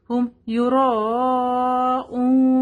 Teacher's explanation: مد متصل ہے، اس کو 4 to 5 کاؤنٹ ہم لمبا کریں گے